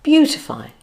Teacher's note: It has 3 syllables. First stress on the first syllable